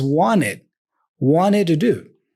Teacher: he doesn't pronounce the T for want or for wanted. He drops the T there and he pronounces the N before.